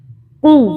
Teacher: اور یہ قاف کو حلق سے پڑھنا ہے